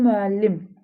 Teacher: Bu müəllim sözünə vurğu müəllim sona düşür